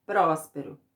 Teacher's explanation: Qual a sílaba que eu falei mais forte? É o prós, né? Que é a sílaba tônica. Então, ela é a antepenúltima.